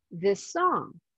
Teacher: the same s sounds so you can pronounce one of the S sounds for a little bit longer